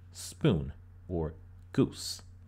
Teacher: this sound was kicked up one bit in the vocalic triangle and became u, as in spoon or goose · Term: central back vowel